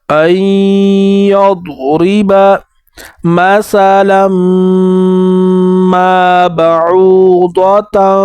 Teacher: مثلا میں لام کو میم کے ساتھ ملا کر میم میں غنہ کریں گے اور میم کے بعد الف آیا ہے، اس وجہ سے 1 الف کی مقدار اوپر کھینچیں گے.